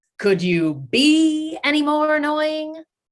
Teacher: His emphasis is on the word be when he asks these questions. And it kind of packs a lot of meaning in there just through that choice.